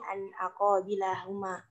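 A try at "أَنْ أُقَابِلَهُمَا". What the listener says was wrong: bukan qabila itu dhamma itu harakatnya salah itu okay. Salah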